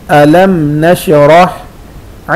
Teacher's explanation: मीम साकिन के बाद नून है, गुन्ना नहीं करेंगे। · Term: इजहार